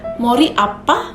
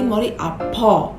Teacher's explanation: Ciri-ciri dialek Gyeonggi-do diantaranya adalah punya intonasi yang smooth dan mengucapkan vokal A menjadi O. Contohnya pengucapan kalimat aku pusing seperti mori apa menjadi mori apo jika menggunakan Gyeonggi-do Saturi.